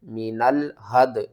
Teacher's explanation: نون کو ہم نے لام کے ساتھ ملانا ہے اور لام سے پہلے جو الف ہے اس کو آپ نے چھوڑ دینا ہے